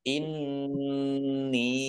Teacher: Nun tasdid dibaca gunah atau mendengung ditahan dua harakat ingat ya biar mendengung maka harus ditahan kalau tidak ditahan berarti